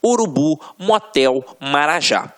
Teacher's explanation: Só a título de exemplificação, observem aqui, ó, oxítonas. A última sílaba é a tônica.